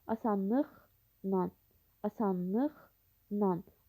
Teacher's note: La şəkilçisi N şəklində tələffüz olunur.